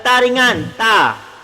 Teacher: Makhraj ta kat mana? makhraj ta dekat ujung lidah. Ujung lidah berada di bagian atas gigi.